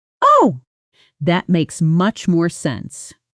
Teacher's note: the natural rising intonation on makes much more sense which native speakers use to show sudden understanding